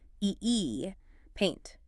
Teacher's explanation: Your jaw does not drop nearly as much. You start with an A sound and glide to an E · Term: diphthong